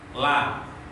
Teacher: Kalau lam, ya, kalau suara lam itu kedua sisi ke samping, la. Tapi kalau ro itu sebaliknya, suaranya keluar dari dua sisi ujung lisan mengarah ke tengah.